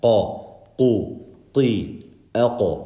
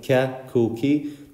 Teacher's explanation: qaf is heavy. And qaf, the tongue is a little bit behind the kaf. Kaf is ka, where the roof of your mouth is soft, hard, I mean, ka, ku, ki.